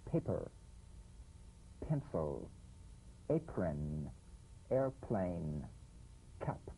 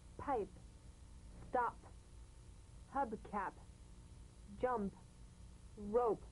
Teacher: On the springing away, feel a B in a whisper without any puff of air. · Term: drumbeat P